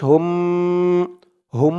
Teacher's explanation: হুম গুন্না হবে ওয়াজিব গুন্না